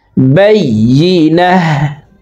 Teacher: ওয়াকফের ক্ষেত্রে হার উচ্চারণ করব এবং হাকে সাকিন করে ফেলবো।